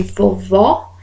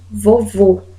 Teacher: nós temos lá o acento agudo em vovó e acento circunflexo em vovô timbre fechado